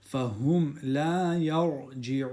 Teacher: ra has a sukoon and the letter before it has a fatha, so the ra will be full mouth